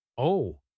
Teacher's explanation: if your voice drops down and stays low, oh, it means realization. It means the puzzle pieces just clicked together in your brain.